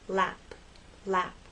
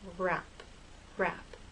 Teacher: relax a little and have a gentle rounding lap lap but with r your lips are more rounded and a little more tense